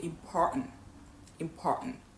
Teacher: native speakers, they tend to hold the T in their throat, right? So they won't fully pronounce a T and they're going to hold it in the throat. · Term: glutter stop